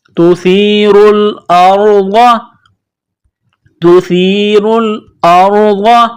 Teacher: ضاد زبر ضا، ضاد کو موٹا کرنا ہے